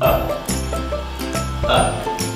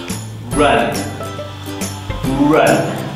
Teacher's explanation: To make this sound, you need to have your mouth open, your lips relaxed, and then move your tongue into the middle of your mouth to make a very wide channel with the roof of your mouth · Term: UH sound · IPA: /ʌ/